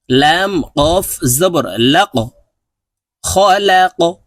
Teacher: এখানে দেখুন কফ হরফ কলকলার হরফ আমরা ধাক্কা দিয়ে উচ্চারণ করব কফ হরফকে উপরের দিকে ধাক্কা দিয়ে উচ্চারণ করব